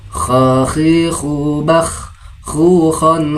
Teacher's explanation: Huruf k posisi hurufnya berada di bagian tenggorokan paling atas yaitu daerah pangkal lidah dan langit-langit mulut yang berdaging. Kho seperti bunyi orang ngorok atau orang tidur ya dengan berdesir dengan suara yang keras begitu. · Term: huruf kho